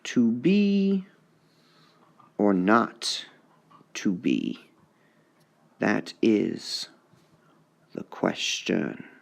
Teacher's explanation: iambic, iambic pentameter with a feminine ending